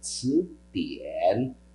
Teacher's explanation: tien no terceiro tom e tsu no segundo